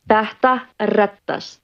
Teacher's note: We have this letter E and thought, and both of those are in þetta. Basically, you put your tongue between your teeth and do a th sound.